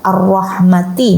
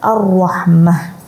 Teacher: karena akhir ayat atau akhir kalimat, maka dibaca bukan tan, tapi dibaca seperti huruf ha